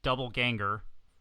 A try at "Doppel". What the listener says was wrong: You said double. It's Doppel.